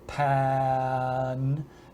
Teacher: sort of blending directly from the stop sound into the vowel